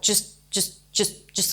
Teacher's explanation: it's not J just but it's a reduced vowel